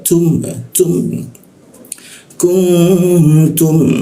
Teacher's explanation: Huruf ta itu kalau dibaca ada sedikit kayak embusan udara.